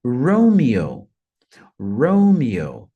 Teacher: Então a primeira sílaba a mais forte